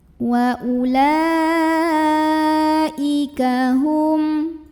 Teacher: Ya, ini mad tabi'inya yang fathah panjang di atas huruf lam, hamzahnya yang ini ya. Maka lamnya kita bunyikan panjang boleh 4 boleh 5 harokat. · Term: mad wajib muttasil